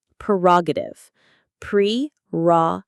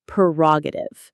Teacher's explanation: The stress is on the second syllable, ra. Prerogative.